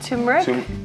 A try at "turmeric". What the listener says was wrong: Turmeric. Turmeric. It's got an R in there.